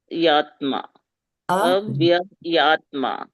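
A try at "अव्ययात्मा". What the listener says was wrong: Avyayātmā. There is no ayatma.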